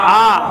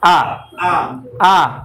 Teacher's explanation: তাহলে এইটা হলো হামজা জবর আ, আইন জবর আ। তাহলে দুইটাই আ, একটা চাপ দিয়ে একটা চাপ ছাড়া